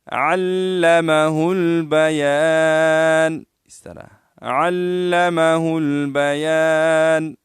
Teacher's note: علمہ البیان، لوگ پڑھتے ہیں علمہ البیان پڑھتے ہیں۔ تو عین ہے، عین کو لام کے ساتھ ملائیں گے اور ہا کو لام کے ساتھ ملائیں گے